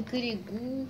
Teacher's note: Вы знаете, что сейчас модно вместо «о» произносить «у», поэтому наверняка слышали «коригу», они вот так говорят.